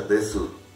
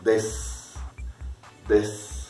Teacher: Porque, o fonéticamente dentro de lo que es la pronunciación de las vocales, la U es muy suavecita. Entonces no suena.